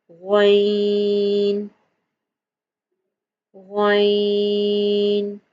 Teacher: غین بھی حروف مستعلیہ ہے اور اسے بھی موٹا پڑا جائے گا.